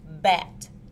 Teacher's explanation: is made using the lips it is a stop sound and is voiced the vocal cords vibrate